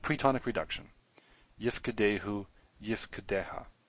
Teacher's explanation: When we add the pronominal suffix, the theme vowel disappears and we get a shava. So instead of yif code dehu or something, we have yif kedehu.